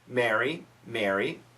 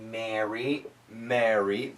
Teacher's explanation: when people are speaking naturally, there's no difference. Don't worry, it sounds the same.